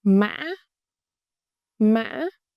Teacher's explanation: It's a broken raising tone. High pitch with a slightly break in the middle, then raise again. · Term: thanh ngã